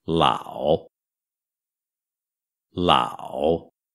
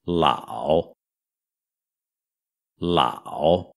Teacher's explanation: o terceiro tom é o mais grave o mais baixo de todos e é o único que faz uma curva